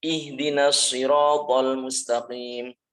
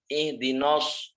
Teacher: Nunnya juga jangan sampai ke pengaruh huruf shad.